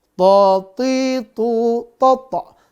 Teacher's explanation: To dia tebal dan napas tertahan.